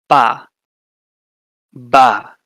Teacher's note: That's bilabial, your lips, both lips.